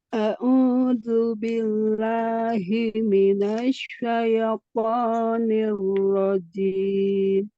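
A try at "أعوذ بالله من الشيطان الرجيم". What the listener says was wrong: Syaitoni, ya. Bukan syaitoni. Nanti miring ya. Kalau seperti itu miring. Syaitoni, ya. Syaitoni. Syaitoni masih seperti itu, masih ye, syaitoni. Jadi masih miring ya untuk ya sukun.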